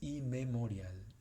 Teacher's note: La palabra es inmemorial, no hay una M extendida.